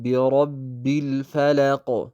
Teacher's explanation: ቢረቢ በምንልበት ሰዓት ራ ምትወፍር ናት፣ አወፍረናት